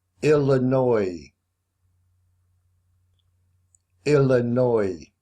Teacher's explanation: The S on the end isn't sounded. You don't say it. All you hear is oi.